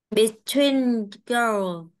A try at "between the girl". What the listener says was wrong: đừng có bỏ cái từ nào, anh đọc qua đây cái em bỏ mất cái chữ the của anh.